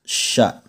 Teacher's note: Huruf sya itu ternyata pengucapannya adalah terletak pada bagian tengah lidah dan di bagian tengah langit-langit mulut paling atas